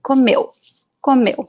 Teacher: The U at the end is very weak.